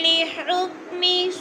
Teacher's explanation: حکمی، می کو لمبا نہیں کرنا، نیچے زیر ہے